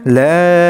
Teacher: লা এখানে লা তিন আলিফ টান হবে। মনে রাখবেন যেই হরফের উপর একটা ছোট চিকন চিহ্ন থাকবে যে এটা ওই হরফটা টান দিয়ে পড়তে হয়।